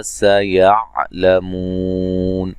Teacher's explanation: सीन को बारीक सीटी से अदा करेंगे